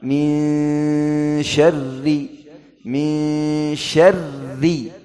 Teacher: Ini nun bertemu syin, ikhfa. Ikhfa dua harakat ghunnah.